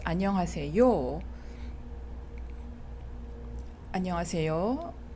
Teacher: that's a question because it has a rising tone.